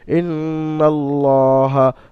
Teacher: আল্লাহ শব্দকে খারাজবার আসার কারণে আলিফ মাদার মত এক আলিফ পরিমাণ টান দিয়ে পড়তে হবে